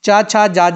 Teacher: उच्चारण के समय जीभ तालु के ऊपर हिस्से को स्पर्श करती है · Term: तालव्य